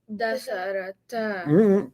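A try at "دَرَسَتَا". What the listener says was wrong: Keep the letters in order. Darasata. Darasata.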